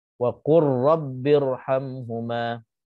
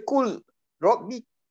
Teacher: Lam itu dah dimasukkan ke dalam ra. Itu idgham. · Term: idgham mutaqaribain